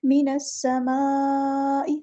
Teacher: connected مد یعنی مد متصل، 4 یا 5 کاؤنٹس ہمیں لمبا کرنا ہے ، من السماء، سین کی سیٹی واضح ہونی چاہیے، من السماء